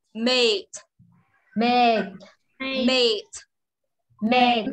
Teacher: chữ tờ đầu lưỡi chân răng nhá